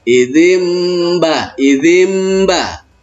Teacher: Maka nun mati jumpa dengan ba, dibalik dia. Suaranya itu terdengar bukan nun mati jumpa dengan ba, tetapi nanti berubah menjadi huruf ma yang sedang mati. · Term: iqlab